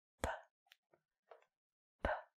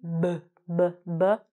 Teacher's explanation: One is p, p. P does not vibrate, but the B, b, b, b, will vibrate.